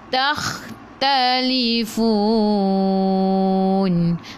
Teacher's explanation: Takhtalifun, sebelum huruf akhir ada waw yang tak ada baris ma'rif disukun, boleh baca 2, 4 atau 6 harakat. Matikan dengan huruf nun, hujung lidah menyentuh lelangit keras di bahagian depan.